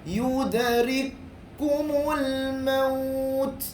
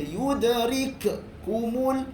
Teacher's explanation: Jangan baca yudrikumul, jangan dilantunkan ataupun dibunyikan. Dia masuk terus kepada kaf yang kedua.